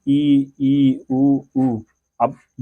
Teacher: इनके उच्चारण में मुख लगभग बंद रहता है